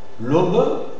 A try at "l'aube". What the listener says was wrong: L'aube, l'aube. C'est un peu difficile, mais bon, il faut faire bien la prononciation, bien marquée. Et moi, je te conseille de bien fermer le O fermé, plus fermé, d'accord?